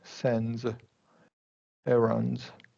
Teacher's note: the situation where you get ND, S, it's going to be NZ sound, right? We're going to drop that D, usually, right?